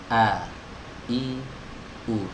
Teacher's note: huruf hamzah ini adalah huruf yang keluar dari pita suara ya, pita suara atau tenggorokan bagian bawah.